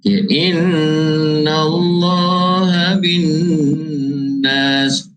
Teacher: Inna Allah bin nas, nun ada syaddah juga, wajibal gunnah, wajib kita dengung 2 harakat